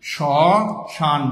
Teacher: শ্মশান বানানের মধ্যে আমরা ম ফলা দিয়েছি কিন্তু উচ্চারণ করিনি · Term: ম ফলা উচ্চারণ করিনি